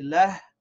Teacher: And at the end here, when we say lah, we have to make sure we actually pronounce that ha sound, not just la